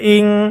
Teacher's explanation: নুন সেকিনের পরে ইকফার হরফ কাফ এসেছে, গুণনা করে পড়তে হবে